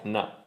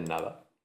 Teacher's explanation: Quitas la D, te quedan dos sonidos A y los juntas y ya está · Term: síncopa